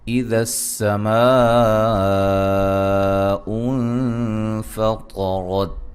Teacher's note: یہاں سین کی سیٹی ہے،